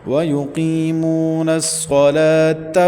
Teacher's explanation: لام کے اوپر کھڑی حرکت کی وجہ سے اس کو 1 سے 1.5 الف تک کھینچیں گے